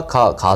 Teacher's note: अल्प प्राण यानी मुख से हवा कम निकले। अब का, खा, खा से मुख से हवा ज़्यादा निकली